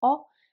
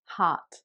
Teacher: in British English, the O is more kind of closed. It's O, whereas in American English, it's more like almost like an A sound. So it would be heart.